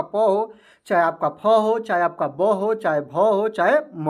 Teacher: प का उच्चारण स्थान करने पर आपके दोनों ओष्ठ सटते हैं